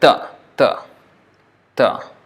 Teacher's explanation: t, just t, is like talk with the tongue against the teeth. So it's like ta.